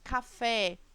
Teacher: a sílaba tônica fé portanto a última sílaba ou seja essa palavra é uma oxítona